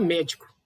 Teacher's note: E proparoxítona, a palavra médico, que é proparoxítona, tendo em vista aí que a antepenúltima sílaba, me, é pronunciada com maior estresse.